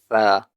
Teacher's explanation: Tha is produced by touching the tip of the tongue to the base of the upper two incisors.